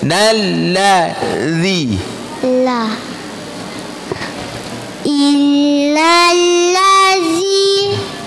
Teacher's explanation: huruf lam tidak keluar lidahnya. Lam di atas.